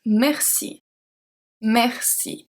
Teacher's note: It's a E but it's pronounced as a È because it's before two consonants.